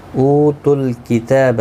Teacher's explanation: واو مدہ ہے، 1 الف کی مقدار کے برابر کھینچ کر پڑھیں گے. کتاب تا کے اوپر کھڑی زبر ہے، 1 الف کی مقدار کے برابر کھینچ کر پڑھیں گے، با کو کھینچنا نہیں.